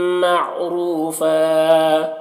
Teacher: معروفہ را کو پر پڑھنا ہے، اور یہاں پر واو مدہ ہے، اور فن میں دو زبر کی تنوین ہے، یہاں پر وقف کریں گے تو ایک زبر کے ساتھ الف پڑھا جائے گا۔